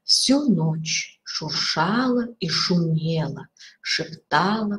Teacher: повторение определенных согласных Ну в данном случае у нас есть шипящие